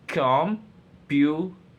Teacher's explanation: stress falls on the second syllable